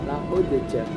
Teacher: dal itu berharakat sukun dan dal termasuk huruf qalqalah, maka dibacanya ringan, itu qalqalah sukun